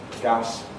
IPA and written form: gas (gas)